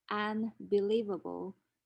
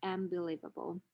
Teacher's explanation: And so the nasal n becomes m or in terms of place of articulation because the consonant after it is a bilabial sound. And so the alveolar nasal becomes the bilabial nasal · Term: nasal place assimilation